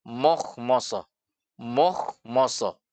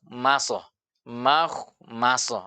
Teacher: padahal yang benar yaitu huruf ma dibaca tipis, kho tebal, ma tipis juga lagi, so tebal sehingga bunyinya maso.